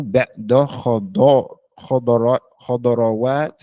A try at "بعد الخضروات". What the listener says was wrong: Okay, let me hear the alif lam. بعد الخضروات.